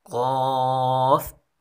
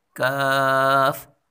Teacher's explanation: قاف، کاف، دیکھیں دونوں ہم آواز حروف ہیں، لیکن قاف کو پر پڑھا جاتا ہے اور کاف کو باریک